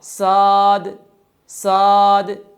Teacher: اب لفظ صاد تھا، لیکن صفات کو ادا نہ کرنے کی وجہ سے صاد سین میں تبدیل ہو گیا